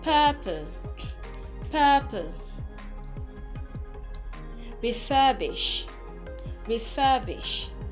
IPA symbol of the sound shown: ɜː